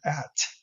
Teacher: So if I say the word at, the a is a sonorant, it's a vowel, it has resonant structure around, in the case of a, energy ranging from about 400 hertz for its first resonant peak up to maybe it's a low vowel, so a front vowel, so it's probably very low as well, maybe about 12 or 1500 hertz at most.